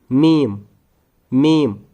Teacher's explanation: दोनों होठ आपको पता होंगे खुश्क वाला हिस्सा होठों में बाहर की तरफ होता है। तो जब हमारे दोनों होठ आपस में मिल जाते हैं खुश्क वाले साइड से मीम अदा हो जाता है